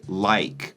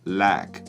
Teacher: he doesn't say like, he says lack with a singular vowel sound